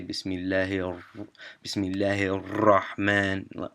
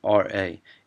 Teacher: You don't want to roll your R at all. So it's a thick R